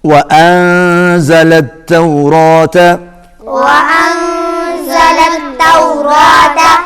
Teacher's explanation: نون جو ہے یہ حروف اخفاء میں سے ہے، آواز ناک میں جائے گی